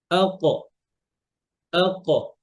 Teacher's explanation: এই মাখরাজের একটা অন্যতম বৈশিষ্ট্য হচ্ছে কলকলা আছে